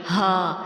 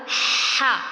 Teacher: جو ہا ہے اس میں ہم سانس اندر کی جانب لے کے جائیں گے، آپ کے حلق پر زور پڑتا ہوا آپ کو محسوس ہوگا، وہاں وائبریشن ہوں گی ہا۔ اور جب دوسرا آپ نکالیں گے وہ ہوگا ہا، اس میں واضح طور پر سانس باہر آتا ہے، ٹھیک ہے۔